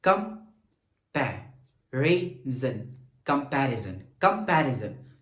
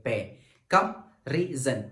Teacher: कम, रे और जन, ये इसको जब हम प्रोनाउंसिएट करें तो ये हमारे पास लॉन्गर नहीं जाते, लेकिन जब हम पे को प्रोनाउंसिएट करें तो हम इसको लॉन्गर कर सकते हैं। पे, कम, रे, जन, और पे ये लंबा हो रहा है, तो पे जो सेकंड हमारे पास है, that second syllable is the stress syllable.